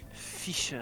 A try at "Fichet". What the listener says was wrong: No, you gotta add the accent aigu at the end.